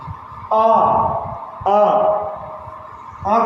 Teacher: आ को बोलने के लिए सबसे ज़्यादा मुंह खुलता है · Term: विवृत